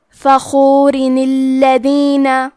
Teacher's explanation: اگر ہم یہ کلمہ کو اگلی آیت کے ساتھ ملا کے پڑھے تو کلمت الذین دوسری آیت میں اس کے شروعات میں الف ساکن ہے، اور کیونکہ قرآن میں 2 حرف ساکن ساتھ میں نہیں پڑھے جاتے لہذا ہم تنوین کی اصلیت جو کہ نون ساکن ہے اس کو زیر سے پڑھ کے کلمت الذین کو پڑھیں گے فخورن الذین، اور ہم کلمت فخور پہ رکے تو را پہ جزم سے رکیں گے اور کلمت الذین کو الف سے شروعات کریں گے.